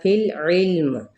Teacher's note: عین کو وسط حلق سے ادا کرنا ہے